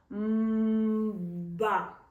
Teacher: Ми з дитиною протягуємо звук м.